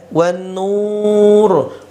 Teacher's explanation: Nur ya, saya baca kurang lebih 6 harokat ya, 6 harokat.